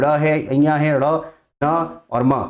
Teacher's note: नासिक व्यंजन है क्योंकि नाक का प्रयोग होता है